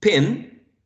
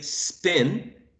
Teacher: when i say um pin the initial sound is aspirated but when i say spin it is not aspirated